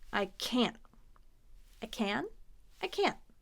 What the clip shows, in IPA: ˈkænt